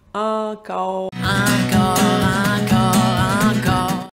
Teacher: Ma bouche se ferme pendant que je suis en train de prononcer le O.